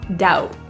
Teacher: The word doubt has a B, but that B is silent. We don't say it.